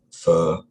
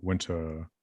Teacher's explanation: one of them is long and one's short one is the nurse vowel and one is the winter vowel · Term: long schwa